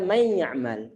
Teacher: Hilang suaranya, suara huruf nun-nunnya. Karena kenapa? Karena telah terjadi suatu pengidghaman dari huruf nun dimasukkan dalam huruf ya. Setelah dimasukkan, maka menjadi satu huruf yang bertasydid. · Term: idgham bi gunnah